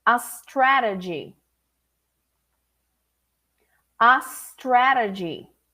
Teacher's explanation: there is no vibration coming there is no e only s like a snake